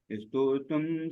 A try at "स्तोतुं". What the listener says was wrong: गलत गलत, इस्तो तुम नहीं, स्तो तुम।